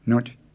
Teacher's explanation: it's pronounced with a creaky tone instead of a low tone